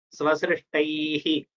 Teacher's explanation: Leave the breath out. So that it feels you have to take one extra matra to tell that visarga.